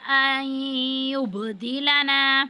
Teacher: نون ساکن کے بعد یا ہے، یہاں پہ حروف یرمنون میں سے ہے، تو ادغام کی صورت میں ہم غنہ کریں گے۔ ان یبدلنا، با ساکن اور یہاں پہ ہم قلقلہ کریں گے با پر۔ · الف پر مد ہے، اس کو 5 الف کے برابر کھینچنا ہے۔